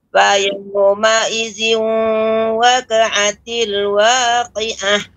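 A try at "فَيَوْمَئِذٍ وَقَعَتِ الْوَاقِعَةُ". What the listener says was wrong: Waqa ya, qafnya ditebalkan ya.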